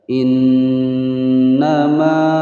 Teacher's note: Nun bertasydid ditekan dan ditahan selama dua ketukan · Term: nah musyaddadah